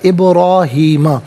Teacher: ابراہیمہ، ابراہیمہ میں بعض ساکن ہے لیکن حرف قلقلہ ہے تو آواز لوٹتی بھی محسوس ہونی چاہیے۔ ابراہیمہ، را پر کھڑا زبر ہے، را کو پر کر کے پڑھیں گے۔